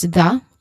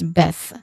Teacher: There's two versions of th sound, right? A voiced which an example of this is the and then voiceless th sound where an example of this is beth.